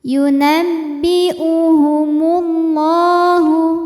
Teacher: Allah dihukumi dengan mad tabi'i muqaddar, sebab huruf lam berbaris fathah panjang, maka huruf lam ini panjang 2 harokat